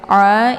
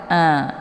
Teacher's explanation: posisi ain ini letaknya di tenggorokan bagian tengah ya. Jadi dia bacaannya agak sedikit lunak.